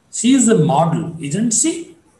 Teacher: Isn't she is to be marked with rising tone.